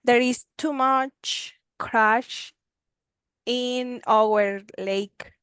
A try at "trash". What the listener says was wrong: You say trash, not crash. Trash.